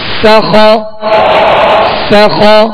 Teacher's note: سیٹی کی آواز اس میں پیدا ہوگی، اور باریک پڑھنا ہے. سین زبر سا، خا زبر خا، سخا سخا.